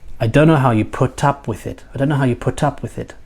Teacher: put up with is a phrasal verb and in these situations up and with are never weak they change the meaning of put and I did say at